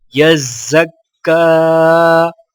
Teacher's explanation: مشدد کو مضبوطی اور ذرا سا رک کر پڑھا جاتا ہے، اور کھڑا زبر کو ایک الف کی مقدار کھینچ کر پڑھیں گے